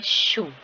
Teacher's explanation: टंग टिप और blade position slightly behind the alveolar reach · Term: पोस्ट एल्वियोलर